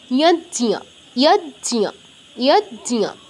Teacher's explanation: বর্গীয় জ হসন্ত মানে বর্গীয় জ অর্ধেক, জাস্ট টাচ, আর ঞ পূর্ণ, ইয়জ্জিয়া ইয়জ্জিয়া ইয়জ্জিয়া, এরকম জতে টাচ করে ঞটা উচ্চারণ করে দিলেই হবে, ইয়জ্জিয়া এরকম।